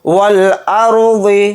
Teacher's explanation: را ساکنہ کو موٹا یعنی پر پڑھیں گے، ضاد کو بھی موٹا یعنی پر پڑھیں گے۔